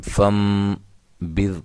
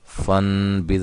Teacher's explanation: اس کو ہم فم بذ کہیں گے، فن بذ نہیں کہیں گے، ٹھیک ہے۔ فن نہیں، فم، اس نون کو میم سے چینج کر دیں گے، بدل دیں گے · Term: اقلاب